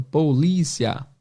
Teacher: Po embaixo, li em cima e cia embaixo. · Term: sílaba tônica